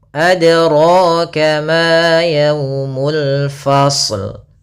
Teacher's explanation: Pada lafal ma kembali lagi ada fathah bertemu alif, maka kita namakan mad tabi'i, panjang untuk ma 2 harokat